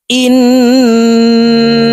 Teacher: তো এখানে দেখুন হরকতের বামে নুনের উপরে তাসদিদ আছে এ কারণে এই হামজা তাশদি নুনের সাথে নাকের বাঁশি থেকে তিন সেকেন্ড পরিমাণ গুন্নাহ করে ধরে রেখে পড়বো